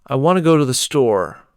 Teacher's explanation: This sentence, want and store, are stressed, and the other words are said quickly and softly. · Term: sentence stress